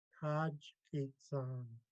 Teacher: First part is high tone, the rest is low tone.